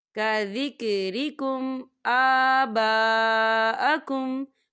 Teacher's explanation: یہاں میم ساکن ہے اور میم ساکن کے بعد حمزہ آ رہا ہے تو یہاں پر اظہار شفی ہے تو ہم یہاں غنہ بالکل نہیں کریں گے